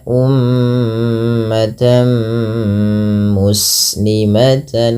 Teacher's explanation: Apabila ada tanwin bertemu dengan mim maka tanwinnya dimasukkan ke huruf mim tidak lagi terdengar bunyi umatan muslimah tapi diganti dengan huruf mim